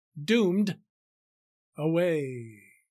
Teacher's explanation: the long drawn out fading of the long a sound in the word away at the end of the sentence